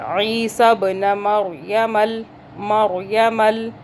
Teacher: रा को मोटा करेंगे, जज़म है ऊपर रा के